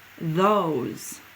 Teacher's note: that o is saying its own name it's making its long sound